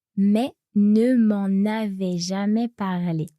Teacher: So we hear the N as a normal N, not a nasal N.